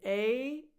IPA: eɪ